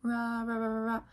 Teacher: If you make the ra sound, ra, ra, ra, ra, ra, you can tell that your tongue is not touching anywhere, right? There's no contact being made. It's getting kind of like close, like your tongue is coming up to this alveolar place, but it's not touching and it's not close enough to cause friction. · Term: approximant